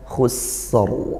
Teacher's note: rnya hukumnya tafkhim ya seperti itu maka dibaca tebal pangkal lidah dinaikkan · Kalau sin maka dialirkan suaranya, dialirkan nafasnya